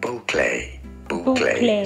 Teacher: Stress on the first syllable.